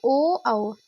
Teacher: जो आपके होंठ हैं उसका भी प्रयोग होगा और कंठ से भी आवाज आएगी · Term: कंठोष्ठ